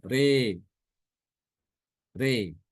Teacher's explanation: Adapun imalah itu bacaan antara fathah dengan kasrah ya.